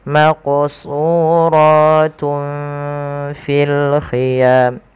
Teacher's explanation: Nah, ikhfa di tengah-tengahnya. Jadi nunnya tidak terlalu dibaca dengan jelas, tapi dia disamarkan kepada huruf selanjutnya.